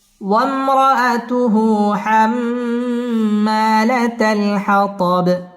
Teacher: ওয়াম মিম সাকিন ইজহারে খাস গুন্না ছাড়া পড়তে হবে